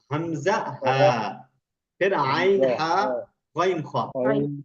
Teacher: हाँ, हलक से अदा होने वाले, सबसे नीचे वाले 2 एक साथ हैं